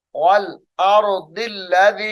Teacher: ये वल अर्दी की दाद को लामे मुशद्दद के साथ मिलाकर पढ़ा जाएगा।